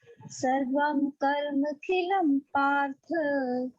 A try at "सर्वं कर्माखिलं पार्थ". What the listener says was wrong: सर्वम कर्मा, कर्म नहीं है, सर्वम कर्माखिलम, बोलते हैं तब हम बोलते हैं कर्म प्लस अखिलम, सर्वम कर्माखिलम।